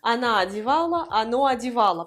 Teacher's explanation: parce que O sans accent tonique se prononce A.